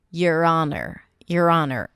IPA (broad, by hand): jər ˈɑːnər